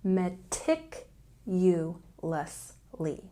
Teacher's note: meticulously has a stress on the second syllable